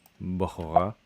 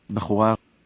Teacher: the B is like pre-voiced before it's released